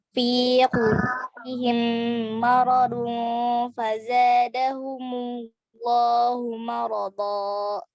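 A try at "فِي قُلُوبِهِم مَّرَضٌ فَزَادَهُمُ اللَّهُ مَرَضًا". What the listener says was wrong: Jayyid ya, sudah bagus dan sudah benar bacaannya ya.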